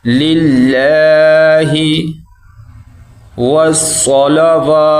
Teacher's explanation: یہ اللہ باریک پڑھا جائے گا کیونکہ پیچھے لام کے نیچے زیر ہے